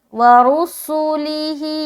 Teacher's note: سین میں سیڑھی کی آواز آئے گی